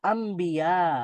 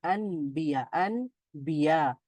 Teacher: তো আন ছিল, তো নুন সাকিনের পরে আবার বা আছে, তো এই জন্য ন সাউন্ডটা ম সাউন্ড হয়ে গেছে, আম্বিয়া হয়ে গেছে। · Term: ইকলাব